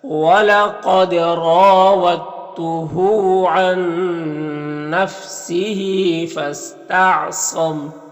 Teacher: یہاں پر صاد حروف مستعلیہ میں سے پر پڑھیں گے · دال ساکن حرف ہے اور تا مشدد حرف ہے تو دال کو تا کے ساتھ مدغم کر دیں گے۔ اس ادغام کو ادغام متجانسین کہتے ہیں، اسے بغیر غنہ کے پڑھتے ہیں۔ · را کے اوپر زبر ہے تو را کو پر پڑھیں گے اور الف مدہ ہے، ایک الف کے برابر کھینچیں گے۔